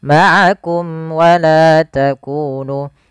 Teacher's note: adanya mim mati bertemu dengan waw, yaitu izhar syafawi, yang dimana harus dibaca dengan jelas suara mimnya dan tidak boleh ditahan.